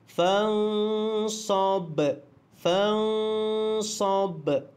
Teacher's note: Kemudian ba itu dimatikan kerana waqaf dan dia adalah qalqalah sughra. Qalqalah kubra, maaf. Bunyikan detakan dia.